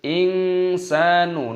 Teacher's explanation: nun sukun bertemu dengan huruf sin dibaca ikhfa disamarkan